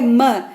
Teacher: മ ഇസ് ബൈലേബിയൽ, കാരണം മ എന്ന് പറയുമ്പോൾ 2 ചുണ്ടുകളാണ് വർക്ക് ചെയ്യുന്നത് അല്ലേ